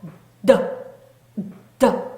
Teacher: D의 소리도 으더 하고 앞에 으 하고 힘을 약간 모았다가 하고 발산해 주시면 됩니다. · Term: 예비음